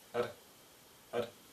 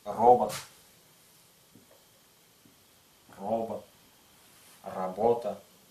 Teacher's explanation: буква Р произносится менее интенсивно чем в русском языке